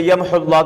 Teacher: کہتے ہیں حرف کو ختم کر دینا، حذف کو، حرف کو ختم کر دینا، جیسے یمحو اللہ کی واو کو وصل میں حذف کر دینا